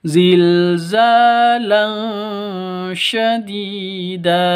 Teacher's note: dipanjang dua ketukan karena ada ya mati diawali dengan kasrah mad asli atau mad thobi'i.